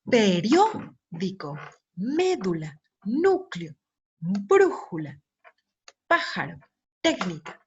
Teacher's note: Todas estas palabras son esdrújulas. ¿Por qué? Porque la sílaba tónica la tenemos en la antepenúltima sílaba.